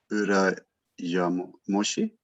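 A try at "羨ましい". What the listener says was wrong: This isn't mo, this is ma. Urayamashi.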